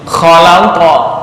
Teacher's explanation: Oke, latihan di qalqalah untuk qaf ya, seolah-olah membaca fathah tapi memantul